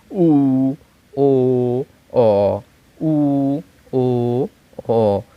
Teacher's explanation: মুখটা গোল হয়ে যাচ্ছে, জিহ্বাটা পেছনে চলে যাচ্ছে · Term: পশ্চাৎ স্বরধ্বনি